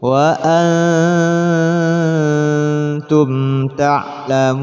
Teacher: Apabila ada mat bertemu dengan sukun, sukunnya nun ketika berhenti, maka disebut mat far'i. Mat far'inya di sini berupa mat arid bis sukun. Hukum panjangnya boleh 3, 2 atau 1 alif.